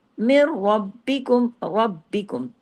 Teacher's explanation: را کو 2 مرتبہ پڑھنا ہے، را کو ہیوی بھی پڑھنا ہے ، را دو اس لیے کہ تشدید کے ساتھ ہے، ہیوی